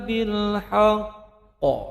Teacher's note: Qalqalah kubra, pantulannya besar.